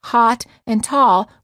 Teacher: States the ah and ah are pronounced the same for example many Americans pronounce hot and Tall with the same vowel sound